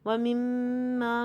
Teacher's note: وَمِمَّا میں دیکھیے خالی الف سے پہلے زبر، پہلے تو 2 کاؤنٹ کا غنہ کریں گے کیونکہ میم مشدد ہے، اور خالی الف سے پہلے زبر ہے تو اس لیے اس کو 2 کاؤنٹ تک لمبا کریں گے.